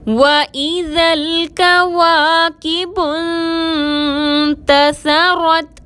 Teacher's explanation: واو کو گول ہونٹوں کے ساتھ ادا کریں گے، ذال کو لام سے ملائیں گے، کاف باریک ہے، اس کو باریک پڑھیں گے · سا کو بغیر سیٹی کے ادا کریں گے، را پر زبر ہے، موٹا پڑھیں گے اور تا سے ملائیں گے۔